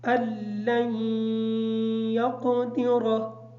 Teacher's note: اس حمزہ کو لام کے ساتھ ملا کے پڑھیں گے۔ میں آپ احباب کے گوش گزار یہ بات کر چکا ہوں کہ ساکن حرف کے بعد اگر مشدد حرف آ جائے تو ساکن حرف کو چھوڑ دیا جاتا ہے اور مشدد حرف کو پڑھا جاتا ہے۔ · یقدر کا جو قاف ہے اس قاف کو موٹا پڑھیں گے، را کو پر پڑھیں گے۔ علیہ کی جو عین ہے اس عین کو کلیئر کریں گے۔